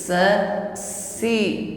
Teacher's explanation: Karena lidahnya istifal, tetap di bawah. Jadi udara yang keluar itu lurus saja sehingga bunyinya tipis. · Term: huruf sin